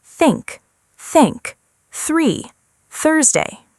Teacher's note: When you pronounce th, your tongue comes slightly forward between your teeth and the air moves gently past it.